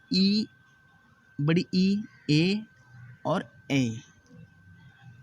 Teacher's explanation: अब हम अग्र स्वर के बारे में जान लेते हैं। अग्र स्वर, जिन स्वरों के उच्चारण में जीभ मुंह के अग्रभाग की ओर आती है